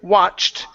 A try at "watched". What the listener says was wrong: Instead of watched, it's watched. ED ending. Okay, give me a T. Watched.